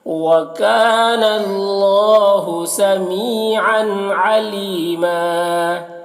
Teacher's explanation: یہاں پر وقف کریں گے تو ایک زبر کے ساتھ الف پڑھیں گے · وکانا، کاف میں الف مدہ ہے، اسے ایک الف کے برابر کھینچیں گے اور اللہ کو پر پڑھیں گے، کھڑا زبر ہے تو اسے ایک الف کے برابر کھینچیں گے۔ سمی میں یا مدہ ہے، اسے ایک الف کے برابر کھینچیں گے۔ عن کی تنوین میں اظہار ہو رہا ہے، تنوین کو جلد پڑھنا ہے۔